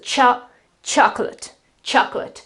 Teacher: the syllable that basically carries the accent is the first syllable, so the O that becomes a sort of an so it is chocolate, chocolate.